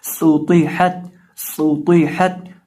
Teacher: हा कहाँ से अदा होगा, हलक के दरमियान से · ये जो सीन है इसको पढ़ते वक्त भी हम अपने होंठों को गोल करके पढ़ेंगे क्योंकि इसके ऊपर पेश है, और तो को पढ़ते वक्त हम इसको मोटा करेंगे क्योंकि ये मोटे हरूफ में से है · ता ज़ुबान की नोक सामने वाले ऊपर के दो दांतों की जड़ से जब लगती है तो ता अदा होता है